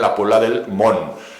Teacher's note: que es Mont, acabado en T, con la relajación fonética en la pronunciación, esa T cae y se convierte en la Puebla del Mont.